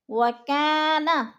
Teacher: وَكَانَ الف مدہ ہے، الف خالی سے پہلے کاف کے اوپر زبر ہے تو الف مدہ، الف مدہ کو ایک الف 2 حرکات کے برابر ہم نے کھینچ کر پڑھنا ہے